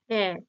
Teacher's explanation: এ কি হচ্ছে জীবটা সামনের দিকে আগিয়ে আসছে তাইতো তাই এটা হবে সম্মুখ স্বরধ্বনি এবার জীবের উচ্চ নিম্ন অবস্থান